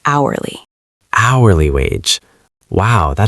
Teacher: Put the stress, the strong energy, on the very first part of the word.